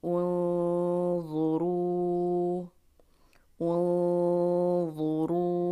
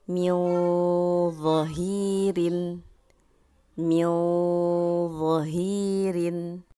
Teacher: ketika nun sukun atau tanwin bertemu dengan huruf dha. Nah, ini masih termasuk kepada ikhfa awsat.